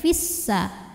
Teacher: Fi namun dibaca panjangnya hanya saat berhenti saja kalau wasal Fiya ini dibaca pendek Fis langsung masuk ke Sin Kenapa karena ada pertemuan dua sukun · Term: iltiq sakinain